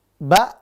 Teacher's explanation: Ba, bukannya bo ya, ba, tipis dia. Karena dikasih harokat fathah, dia bukan o tapi dia a. Lalu napasnya tertahan, ba, nggak boleh, ba, nggak boleh, harus tertahan, ba.